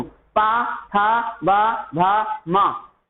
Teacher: कोई भी वर्ण बोलते समय आपके दोनों होंठ आपस में चिपक रहे हैं, दोनों होंठ आपस में स्पर्श हो रहे हैं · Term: ओष्ठ